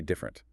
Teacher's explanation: Two syllables. The middle vowel is gone. >> Completely gone.